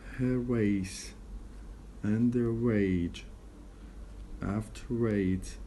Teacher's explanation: we move the re sound to the next word as if it were an onset for the next vowel in the next word · We insert the re and we pronounce it as if it were a part of the onset of the next word.